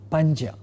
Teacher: In the word Panja, the second member of the cluster is a palatal consonant, Ja. Therefore, the nasal member of this cluster is going to be a palatal nasal Nya, and therefore we have the word sounding as Panja.